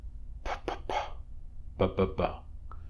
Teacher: The sounds pa and ba, as in pat and bat, are bilabial stops because you block the air with both your lips. Feel them.